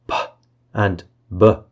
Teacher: p and B are bilabial plosives babal means the place of articulation where the obstruction happens is